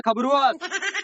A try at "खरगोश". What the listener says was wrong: अरे खबरोस नहीं खरगोश।